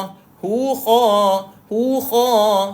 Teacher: Kha, tuan-puan, duduk kat hujung kerongkong.